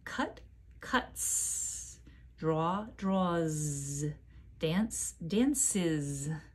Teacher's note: sometimes the S sounds like S, sometimes the S sounds like Z, sometimes the S sounds like two sounds, I-Z. Why? It all depends on the sound before the S, the sound at the end of the verb.